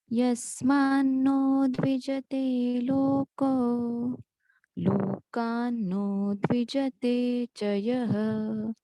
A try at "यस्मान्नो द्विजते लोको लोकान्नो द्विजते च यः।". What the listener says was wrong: Beautiful, बहुत अच्छे ma'am.